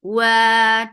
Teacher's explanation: ريض and make dot heavy too. Wa two counts long and circle your lips for wow always when you're saying wow because this is its makhraj